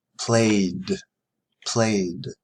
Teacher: the last sound a is voiced so we would say played